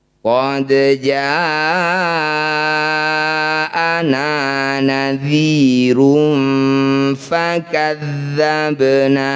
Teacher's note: Panjangkan 2 harokat saja meskipun dihentikan. Jangan terlalu panjang. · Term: mad tabi'i